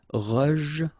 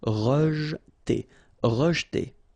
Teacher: here the E is not really pronounced, so you get rej